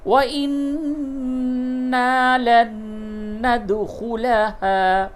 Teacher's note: نون مشدد ہے، غنہ کیجئے، نون ساکن کا نون میں ادغام کیجئے